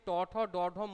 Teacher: দেখো ট উচ্চারণ করতে গেলে যেখানে গিয়ে জিভটা ঠেকছে, ট বললে জিভটা উল্টে গিয়ে গলার কাছে উপরের অংশে একটা জায়গায় নরম অংশে ঠেকছে, সেই অংশটার নাম হচ্ছে মূর্ধা। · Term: মূর্ধন্য বর্ণ